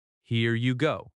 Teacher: That falling intonation shows confidence.